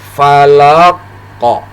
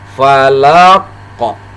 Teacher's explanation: ketika huruf qaf ini berada di akhir kalimat seperti ini, maka cara membacanya dipantulkan. Jadi ini dimatikan lalu dipantulkan.